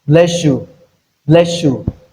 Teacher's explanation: the combination of S and Y to have SH · That is in slow speech, but in connected speech you have bless you, bless you. That is s and yeah, you combine to give us sh. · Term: coalesced form